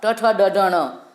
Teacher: जीभ जब मूर्धा से स्पर्श करती है तो ये ध्वनियाँ निकलती है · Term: मूर्धन्य ध्वनियाँ